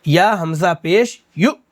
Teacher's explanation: یا حمزہ ہے تو اس میں بھی ہم جھٹکا ماریں گے